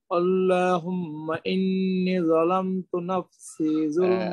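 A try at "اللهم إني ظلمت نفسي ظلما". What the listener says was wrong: ইন্নি একটু লম্বা করব ইন্নি একালে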